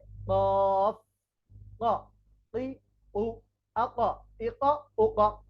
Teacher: উপরের তালু অর্থাৎ জিহ্বাটার উপরে যে অংশ এটাকে বলে তালু তাহলে জিহ্বার গোড়া উপরের তালুর সঙ্গে লেগে উচ্চারিত হবে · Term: চার নাম্বার মাখরাজ, কফ